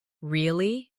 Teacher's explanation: With a rising tone to show surprise